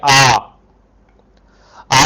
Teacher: जब आप बोलेंगे तो मुंह पूरी तरह से खुला हुआ है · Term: विवृत